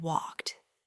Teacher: Think about the difference between walk and walked. That little T sound at the end of walked instantly tells us it's in the past.